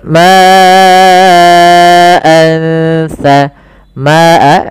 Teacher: di sini ma-nya kita panjangkan sepanjang 4 harakat atau 5 harakat, karena di sini kita namakan dengan mad wajib muttasil.